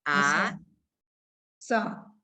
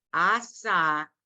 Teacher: The letter is silent, it's an ayin. So the only sound you give it is the vowel ah. And you know the H at the end of a word without any vowel is silent.